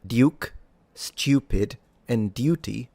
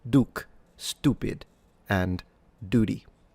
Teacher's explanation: in British English specifically received pronunciation the words duke stupid and duty do have the y sound or y sound in between the consonant and the vowel. But in American English this is usually dropped. This results in pronunciations such as duke, stupid and dudy. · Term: yod dropping